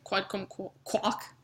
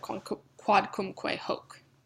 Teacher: the H is actually going to be silent, and so the que and the hoc will actually blend to make an elision, making it quodcumquac instead of quodcumque hoc.